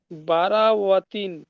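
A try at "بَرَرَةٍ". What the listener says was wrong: বারো রতিন। হ্যাঁ, বারো বাজর বার অজর রা, বারো। ওয়াতিন নয়, এখানে ওয়াও আছে কি দেখেন, এখানে ওয়াও আছে কি? ওই হা নেই। বা জবর বার অজবর র, কি হয়?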